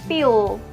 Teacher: dark L, or we can call it as velarized dalam accent English.